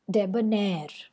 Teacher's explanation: whereas stress comes at the end of the word debonair so the both are short unstressed syllables and ner is the long or stressed syllable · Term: anapest rhythm